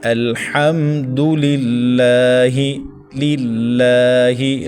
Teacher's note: لفظ اللہ سے پہلے زیر ہے تو اس کو باریک پڑھیں